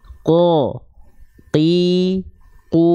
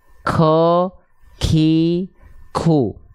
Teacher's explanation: huruf q itu tidak mengalirkan percikan nafas sedikit pun qo Qi qu jadi enggak ko Ki khu Jangan sampai kita · tidak mengalirkan nafas nama sifatnya jahr Q itu ketika dilafalkan dia tidak mengalirkan nafas karena apa Karena pangkal lidahnya bergesekan dengan langit-langit lunak